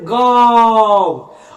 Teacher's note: जिसका उच्चारण मुख और नाक दोनों से होता है ना, हम वैसे वर्ण को अनुनासिक स्वर कहते हैं